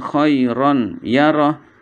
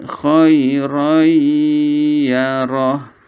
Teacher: huruf nun sukun atau tanwin kepada huruf sesudahnya disini yaitu ya Sehingga yang terbaca adalah ya disertai dengan dengung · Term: Idgham Bighunnah